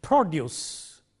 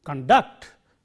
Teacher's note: stress on the first syllable used as a noun